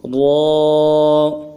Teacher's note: زبان کا سرا اوپر کے تالو سے لگے گا، اور زبان کا بیچ اٹھائیں گے، تب یہ لفظ را ادا ہوگا۔ پھر پڑھتے ہیں، را، موٹا کر کے پڑھنا ہے۔